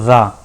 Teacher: रा बोल के देखो, रा तो जीभ हमारी कंपन होती है, ठीक है। तो ये ला को पार्श्विक व्यंजन और रा को लुंठित व्यंजन बोलते हैं, ठीक है।